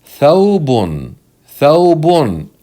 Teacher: the waw here is not a long vowel. It's a genuine letter that's pronounced with a sukoon.